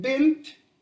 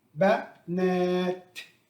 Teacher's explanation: Notice that the difference between bint, the singular, and ba, na has the long vowel a after the noon